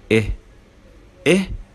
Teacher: واللسان هنا مرتفع قليلا في الفم ومرتخي مش مشدود، يعني مش شدينه لفوق، فبنقول إيه إيه as in get إيه as in get إيه إيه.